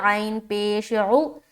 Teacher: پیش کو کھینچنا نہیں ہے، جل پڑنا ہے، لیکن عین پراپر اور واضح طور پر ادا ہونی چاہیے